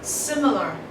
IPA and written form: ˈsɪmɪlə (similar)